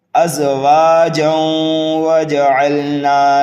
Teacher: تنوین کے بعد واو آنے کی وجہ سے یہاں پر بھی جو ہے ادغام ہوگا